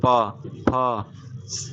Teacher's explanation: होठ के दोनों सतह टच होके वो ध्वनि निकल रही है